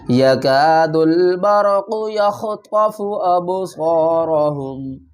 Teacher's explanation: دال کو لام سے ملائیں گے